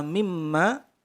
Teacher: ada mim bertasydid, maka didengung 3 ketukan, namanya gunnah musyaddadah